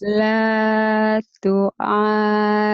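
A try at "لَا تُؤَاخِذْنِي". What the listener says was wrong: tu'ajid, tu'akhid. Titiknya di atas, bukan di bawah.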